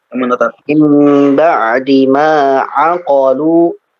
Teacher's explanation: Qafnya pendek, aqalu, lu-nya 2 harakat, aqalu pendek